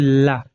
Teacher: ला का उच्चारण करते टाइम जीवा आगे लॉक हो जाती है और वायु हमारी पार्श्व से निकलने लगती है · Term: पार्श्विक व्यंजन